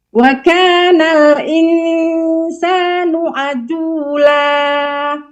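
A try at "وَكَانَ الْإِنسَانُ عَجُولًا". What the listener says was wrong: Kurang jelas jimnya.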